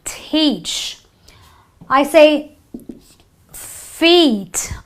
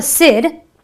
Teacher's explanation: that's what we're after aren't we um the first word teach it is a long e the E is almost elongated you know you you stretch your e